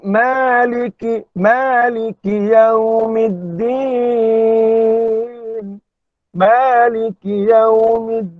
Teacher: Mad asli mutlak. 2 harakat. 2 harakat. Bukan 4, bukan 6.